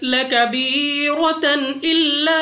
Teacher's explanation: 2 जबर की तनवीन के बाद हमजा हरूफ हलकी में से है, इजहार का कायदा है, बगैर गुन्ना के पढ़ा जाएगा